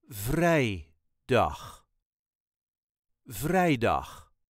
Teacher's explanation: slight emphasis on vrij